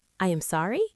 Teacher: Notice how my voice does not go up at the end. When we are nervous and apologizing, our pitch usually rises. We say, "I am sorry." But when we are confident, our voice stays level.